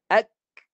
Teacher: Sifat kaf bukan pantulan suara. Tapi sifat kaf dia melepaskan hamas.